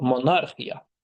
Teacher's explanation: vurğusu ikinci hecaya düşür. İya hissəciyi ilə əvvələ düşür vurğu.